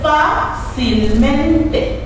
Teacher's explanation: la sílaba que está acentuada en este caso, queda antes de la penúltima, lo que le hace una palabra sobre esdrújula.